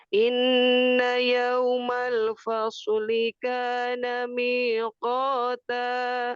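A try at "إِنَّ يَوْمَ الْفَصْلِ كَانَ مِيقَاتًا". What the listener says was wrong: Ulang yang terakhir, innanya di 3 ketukan.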